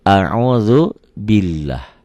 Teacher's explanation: lafaz Allah dibaca tipis bunyi a